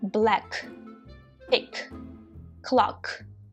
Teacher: глухий звук подібний до українського к в слові Кріт але вимовляється енергійніше із придихом